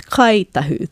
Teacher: the ng of Ngai Tahu, our iwi down south, they will pronounce it as Kai Tahu, the k or k sound